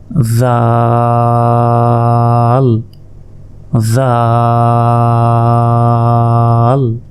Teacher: জিহ্বার আগা সামনের উপরের 2 দাঁতের আগার সঙ্গে লাগিয়ে দিন,